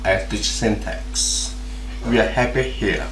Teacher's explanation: the last stressed syllable goes down from the high pitch to the low pitch